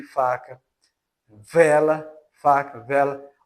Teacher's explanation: né por aí né manga e o Lábio dentais que é quando o lábio inferior e os dentes superiores tocam-se criando obstáculo parcial a corrente de ar